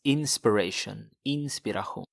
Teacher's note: the sh sound, it becomes a h sound